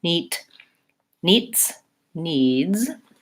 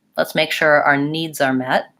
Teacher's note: once I lengthen that vowel I want to keep my voice on when I'm saying the D and the Z sound